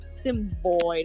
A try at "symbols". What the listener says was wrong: Symbols. I believe it's believe it's symbols. You said D instead of S max.